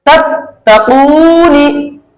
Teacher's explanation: पहली मरतबा जो ता मिला वो साकिन के साथ और दूसरी मरतबा हरकत के साथ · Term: तशदीद